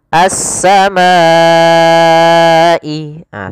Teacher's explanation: Kalau di sini huruf madnya adalah alif dan hamzah tersebut pada satu kata, maka dinamakan dengan mad wajib muttasil. Panjangnya empat harakat atau lima harakat.